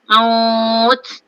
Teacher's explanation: Maut tu maklin. Sebab dia waw sebelumnya baris atas kan. Lembut kan? Huruf lin waw dengan ya.